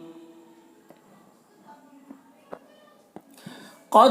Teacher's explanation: قود میں قوف کو پر پڑھیں گے، دال میں قلقلہ کریں گے۔